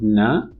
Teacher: of the nasolab alveolar you have complete closure in the mouth the two articulators the tongue and the alveolar ridge completely block the flow of air · So we know that when we utter the sound na, what happens is, because it's a nasal alveolar, in the articulation of the nasal alveolar, you have complete closure in the mouth.